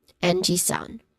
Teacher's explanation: A short e vowel sound paired with a nasal sound ng.